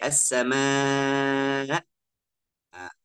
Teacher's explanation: kalau hamz sukun dua pita suara itu langsung tutup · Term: Hamzah sukun